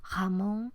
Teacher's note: Es un sonido sonoro pero uvular, se articula en la campanilla. Sería la articulación jamón en lugar de Ramón. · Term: velarización de la R